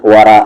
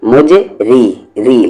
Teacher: اس را کو ہیوی کریں کیونکہ اس پہ زبر ہے، اور اس را کو لائٹ کیونکہ اس پہ زیر ہے